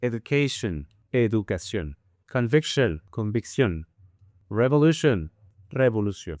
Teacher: It turns out that in Spanish most words ending in, you will place the stress in the last syllable